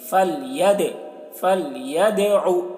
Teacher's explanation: दाल हुरूफ कलकला में से है और इस पर जज्म है तो दाल की आवाज़ डबल निकलेगी